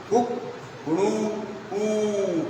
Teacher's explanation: पहली बार वो जो बोला वो ह्रस्व है, दूसरी बार जो बोला वो दीर्घ है, और तीसरी बार जो बोला वो प्लुत है। और इसको मात्रा में नापिए तो कहते हैं कि पहली बार उसने जो बोला उसमें 1 मात्रा है।